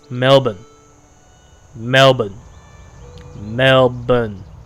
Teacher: Drop the R and just say Melbourne. Almost like silent R.